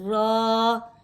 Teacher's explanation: را کے اوپر کھڑا زبر ہے، اسے حرکتین مقدار کھینچ کے پڑھیں گے اور را پر پڑھی جائے گی جیسے را، مل کے بنے گا اب را۔